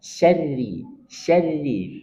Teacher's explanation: Ingat rnya dibaca tipis karena dia Ra bertasdid berharakat kasrah